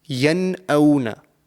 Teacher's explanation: I'm not doing any nasal sound because the letter that has come after the noon sakin is a hamza.